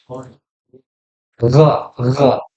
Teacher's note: Huruf ghain itu di tenggorokan bagian paling atas.